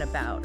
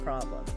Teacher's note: It's that lazy huh sound you hear in unstressed syllables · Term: schwa